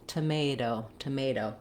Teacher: But we don't use that same aspirated T in the middle of words when the T is between two vowels or two unstressed syllables. So this T is going to sound more like a D · So this T is going to sound more like a D, tomato, tomato. So it's going to be what's called a flap T, and my voice should be on. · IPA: /ɾ/, ɾ